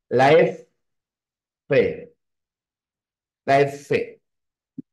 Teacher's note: es que tu labio va hacia tus dientes